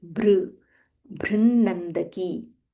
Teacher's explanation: this is Mahaprana Bha and it is R, Br, Brinnandaki. Half Na followed by full Na.